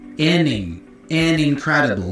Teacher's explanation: So the N for N is joined with the I for incredible.